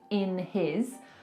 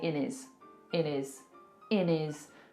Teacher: a lot of the time in the UK we will drop our hes